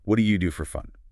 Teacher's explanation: Emphasize that first do a little bit.